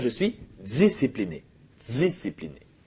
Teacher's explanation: C'est-à-dire qu'au lieu de faire un son T, comme on fait nous les Français, les Québécois vont faire souvent le ts. C'est-à-dire un T plus un S. Par exemple, un Québécois va pas dire je suis discipliné, mais il va dire je suis discipliné.